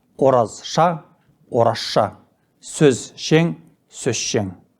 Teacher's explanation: Дүйсен ғали, дүйсен ғали. Түбірдің соңғы с, з дыбыстарының бірі ш дыбысының алдынан келсе, ол екеуі айтылуда ш дыбысына айналады. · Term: Регрессивті ассимиляция